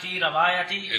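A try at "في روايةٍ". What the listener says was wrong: فی صبر نہ پتر جی فی روایتن روایتن رے تھلے زیر بچہ ہے غلطی ہونے آپ ٹھیک کرنی ہے ڈال کے فی روایتن الرجل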